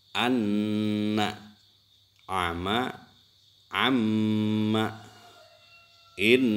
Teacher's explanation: Ini ada keterangan setiap bacaan yang menghadapi tasjid, apa saja itu sebetulnya huruf yang ditasjid, suara ditekan, ditambah 2 harokat dan berdengung. Ini harus berdengung. · suara ditekan ditambah dua harokat dan berdengung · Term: gunnah musyaddah, ghunnah musyaddah